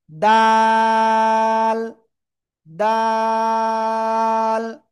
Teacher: জিহ্বার আগায় সামনের উপরে দুই দাঁতের গোড়ায় লাগাবো, লাগিয়ে তিন আলিফ টেনে পড়বো।